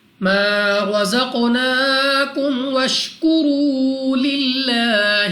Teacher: لام آف اللہ سے پہلے حرف کے نیچے زیر ہے تو اس لام آف اللہ کو باریک پڑھیں گے، یعنی اپنی آواز کو نیچے گرا کر